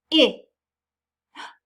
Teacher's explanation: I can feel my throat vibrating so it must be voiced